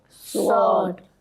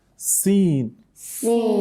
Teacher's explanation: Okay, you can see sword it comes out heavily because while pronouncing sword, the back of your tongue rises up, whereas in that of sin, it doesn't do so